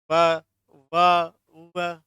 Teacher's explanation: आपके आगे वाले जो दांत है ना बेटा, वो नीचे वाले ओष्ठ पे लगते हैं। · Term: दंतोष्ठ